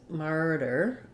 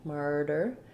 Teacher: First of all, we have first syllable stress. We have the R diphthong.